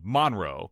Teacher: people in Monroe, they would put the emphasis on, the first syllable